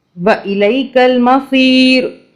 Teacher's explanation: رو نہیں پڑھیں گے را کو ساکن کر دیں گے